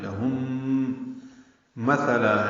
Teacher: میم ساکن کے بعد میم آنے کی وجہ سے غنہ ہوگا، ادغام مع الغنہ ہے